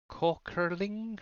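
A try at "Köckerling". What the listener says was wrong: Yeah, it's a U. Kukeling, yeah.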